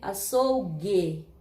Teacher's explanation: parece que o U não aparece, vira semivogal. Aparece mais o G e o E. Açougue. Percebe que é como se fosse um G e um U, só que a letra G não existe.